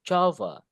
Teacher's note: Java, berarti di depan penekanannya. Bukan Java.